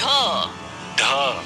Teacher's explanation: ढ भी मूर्धन्य ध्वनि है। इसका उच्चारण अंदर से आती वायु द्वारा जीभ की नोक से मूर्धा को छूते हुए होता है।